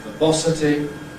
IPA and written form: vɜːˈbɒsəti (verbosity)